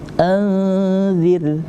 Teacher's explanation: Ada huruf ro dan sebelumnya ada huruf yang berbaris kasrah, maka hukum bacaannya harus tarqiq, tipis. Maka kita bacanya tipis.